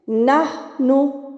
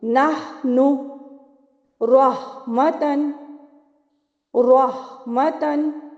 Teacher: ہا کی ادائیگی دیکھیے، نحن، ہا بھی وسط حلق سے ادا ہوگا، اور اس کو ادا کرتے وقت یہ جو ٹھنڈی آ ہوتی ہے نا، یہ آواز نکلے گی آپ کی